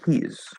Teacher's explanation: notice of course the s is a z sound and the word is and we keep that z sound in he's